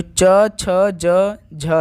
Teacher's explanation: तो ये स्पर्शी संघर्षी व्यंजन के हैं, जो च छ ज झ हैं